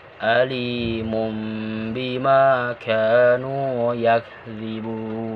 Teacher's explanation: ini diantaranya Imam Al Jazuli menyatakan cara membacanya seperti Ifa yakni suara mim tidak terdengar sempurna karena dua bibir tidak merapat dengan sempurna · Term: iqlab